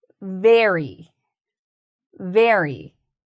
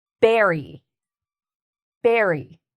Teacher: There's no teeth with the B sound. Remember, it's the two lip sound,